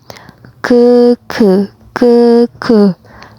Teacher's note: Ke, dan tidak ada nafas yang keluar. Tidak ada hembusan angin yang keluar